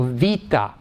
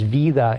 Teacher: The T becomes D and finally drops out entirely.